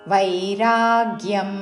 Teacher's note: వై వా ఐత్వముతో రా మీద ఆఘాత